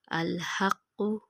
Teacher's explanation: ہا کی آواز حلق سے نکالیں گے